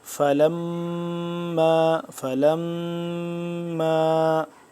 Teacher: فلما میم مشدد ہے تو اس پہ ہم غنہ کریں گے